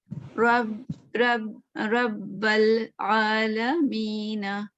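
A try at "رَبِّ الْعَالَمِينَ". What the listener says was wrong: जबर दे दिया।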